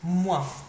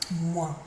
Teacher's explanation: Finishes in your nose, quite a nasal sound that one.